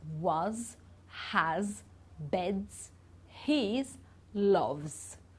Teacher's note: It's not a S sound, it's a Z sound. So here it sounds like a Z when it's after a vowel or another S as well, or a voiced consonant, when we are using our vocal cords.